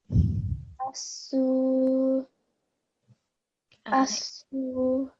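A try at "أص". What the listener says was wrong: Just make this sad a bit thicker. So asu, asu, asu. So the thickness in the sad has to come through.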